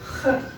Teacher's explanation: Си при лениции дает звук Х, как будто вам что-то попало в горло, и хочется этот посторонний объект оттуда откашлять.